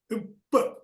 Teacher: இரண்டு உதடுகளும் மூடி திறக்கும் மூடி திறப்பதால் பகரம் உருவாகிறது